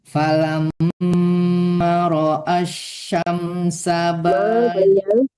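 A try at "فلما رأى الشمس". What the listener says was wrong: Falamma, panjangkan ma-nya 2 harkat.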